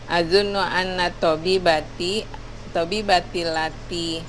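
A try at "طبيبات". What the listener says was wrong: Tabibati panjang.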